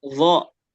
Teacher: Kalau zo dia kan ujung lidah pakainya dan dia agak digigit.